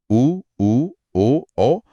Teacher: बिल्कुल होठों के आकार के आधार पर स्वरों को वृतमुखी और अवृत्तमुखी में बांटा गया है। वृत्त मुखी यानी जहां होठ गोल हो जाते हैं।